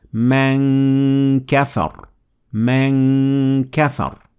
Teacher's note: Your mouth is getting ready for the kaf, but letting the sound resonate in your nasal cavity. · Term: ikhfa